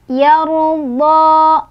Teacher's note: Ro sukunnya dibaca secara tafkhim karena ro sukunnya didahului oleh huruf berbaris fathah ya.